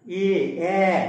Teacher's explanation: দেখো একটু ঠোঁটটা একটু প্রসারিত হচ্ছে দু সাইডে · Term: প্রসারিত স্বর